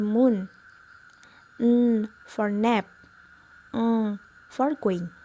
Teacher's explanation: The next is nasal. We close our palate and let air stream through the nose.